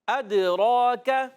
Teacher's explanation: را پر زبر، کھڑا زبر ہے، ایک الف کھینچ کر ادا کریں گے، را کو پر بھی پڑھیں گے، حرف قلقلہ دال ہے، حرف قلقلہ 5 ہے، قاف، طا، با، جیم، دال۔